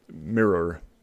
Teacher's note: We tend to say it as like one syllable often. Look at yourself in the mirror is kind of how people say it, like M-E-E-R.